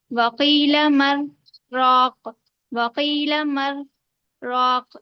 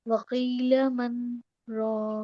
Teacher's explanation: نون ساکن کی آواز نہیں ظاہر ہونا چاہیے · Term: ادغام تام